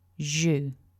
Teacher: Syllable 2 has that voiced j sound followed by a slightly shorter oo.